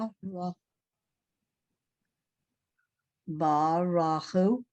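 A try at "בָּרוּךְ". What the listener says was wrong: Not Rachu. It's the resh and the vowel go together.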